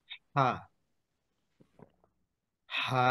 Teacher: কণ্ঠবর্ণ, কণ্ঠ থেকে উচ্চারিত হয়। হাকে চাপ দিয়ে পড়েন